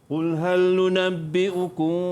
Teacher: Dengung dengan kadar 2 harakat. Dan bibir atas, bibir bawah agak-agak bersentuh je. Bibir atas dengan bibir bawah. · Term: ikhfa syafawi